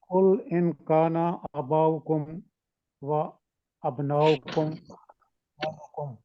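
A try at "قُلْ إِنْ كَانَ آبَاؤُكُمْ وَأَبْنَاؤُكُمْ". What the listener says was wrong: نہیں، آپ مد کو دیکھیں نا، الف کے اوپر کھڑی زبر ہے اور آگے بھی مدیں ہیں، اس کو ذرا خوبصورت پڑھیں۔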